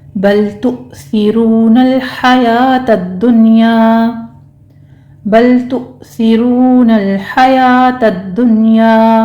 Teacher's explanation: بل تو میں لام کو ہم نے سٹاپ کرنا ہے، اور تو میں حمزہ پر جھٹکا دیں گے تھوڑا سا، را مفخم پڑھتے ہوئے آگے واو مد ادا کریں گے، آگے لام کو بھی سٹاپ کرنا ہے۔